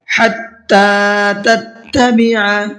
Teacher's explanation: حَتَّىٰ کے تا کے اوپر کھڑا زبر ہے، اس کو بھی کھینچ کر کے پڑھنا ہے، اور عین کو حلق سے نکال کر کے پڑھنا ہے، تتبع نہیں پڑھنا ہے، تتبع۔